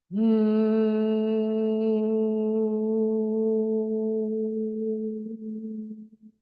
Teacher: So I'm just putting my lips together, and it's M if I was to write it out.